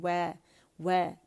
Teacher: वाव जब हम बोलेंगे तो हमारे होंठ दांतों को नहीं लगेंगे बल्कि रोल करेंगे